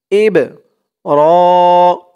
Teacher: এই বা টা হচ্ছে কলকলার হরফ ধাক্কা দিয়ে পড়তে হবে